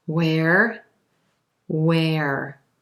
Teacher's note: you don't hear that H at all